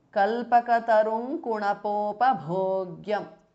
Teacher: So the anuswara changes to the nasal of the ka varga, which is nga. So kalpakatarum kunapopabhogyam because of sandhi.